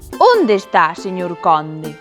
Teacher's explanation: Que curioso que conde sexa con o aberto, pero que onde poida ser con o pechado ou con o aberto.